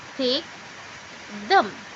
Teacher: Suara dental diproduksi ketika lidah berada di antara gigi atas dan gigi bawah.